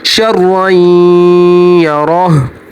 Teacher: रा के ऊपर जब भी ज़बर आएगी तो रा मोटी पड़ी जाएगी